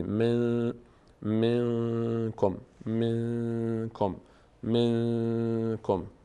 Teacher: نه از حروف حلقی و نه با هست اینجا اخفا میشه نون از بینی ادا میشه به همراه توقف مقداری توقف در هنگام ادا از بینی من منکم منکم منکم منکم من کم این رو میگیم اخفا